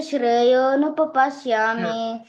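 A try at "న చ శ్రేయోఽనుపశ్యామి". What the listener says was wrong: నచ శ్రేయోను పశ్యామి. నచ శ్రేయోను ఉపపశ్యామి అంటున్నావు. అలా అనకూడదు. అది మొత్తం కలిపి నచ శ్రేయోను పశ్యామి. ఓకే, అది అనుపశ్యామి. శ్రేయ అనుపశ్యామి కలిపి శ్రేయోను పశ్యామి అయింది. సో నువ్వు ఇంకో ఊ పెట్టావు అనుకో, అది మిస్టేక్ అవుతుంది.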